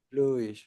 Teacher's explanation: So, you stress the first vowel, bluish.